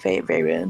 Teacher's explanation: Actually, the emphasis seems to be on the second syllable.